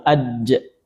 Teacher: Dan begituun huruf jim ja. Apalagi kalau kita sukunkan aj ya suaranya tertahan dulu